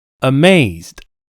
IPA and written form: əˈmeɪzd (amazed)